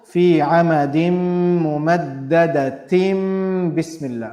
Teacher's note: the tanween sound changes if there is a ba after it. It changes to meme.